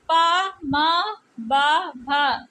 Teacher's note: ये पा वर्ग की ध्वनियाँ है, ये ओष्ठ से उच्चारित होती है, इन्हें ओष्ठ व्यंजन कहते हैं।